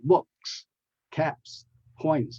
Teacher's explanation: all with the S sound because the word book ends with the K, caps with the P, and point with the T, and those are voiceless consonants, voiceless sounds. So the plural has the S sound, so books, caps, and points.